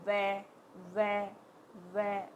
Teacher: जब आप वै वै बोलोगे तो नीचे का होठ आके दांतों के वहाँ टच होगा, तो उसको बोलेंगे दंतोष्ठ, दंतोष्ठ है।